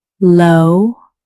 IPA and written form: loʊ (Low)